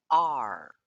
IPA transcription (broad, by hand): ɑr